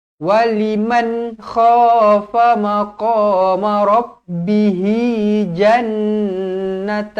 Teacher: Nun yang bertanda sabdu wajibul gunah dengung dua harakat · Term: wajibul gunnah